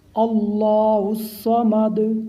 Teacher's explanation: اللہ تعالیٰ کے نام کو موٹا پڑھنا ہے کیونکہ اللہ تعالیٰ کے نام سے پہلے فتح ہے